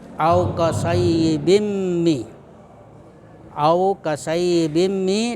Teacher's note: Jadi yang au kasayyibim mi itu tanwin bertemu mim. Hukum bacaannya disebut idgham bigunnah. Idgham bigunnah. Kemudian cara membacanya itu didengunkan.